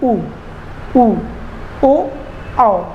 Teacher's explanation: तो अब आप देखिए कि आपके जो ओठ हैं वो कैसे हो रहे हैं, वृत्ताकार के गोल हो रहे हैं। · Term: वृत्तमुखी